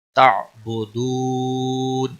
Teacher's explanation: واو مدہ ہے اور وقف کی صورت میں نون ساکن ہوگا تو مد العارض وقفی ہوگا، 3 سے 5 سیکنڈ لمبا کر کے اب وقف کریں گے۔